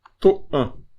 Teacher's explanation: E esse an é nasal, né?